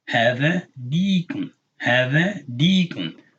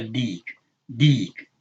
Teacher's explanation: This ya is elongating this kesra to make a long e sound.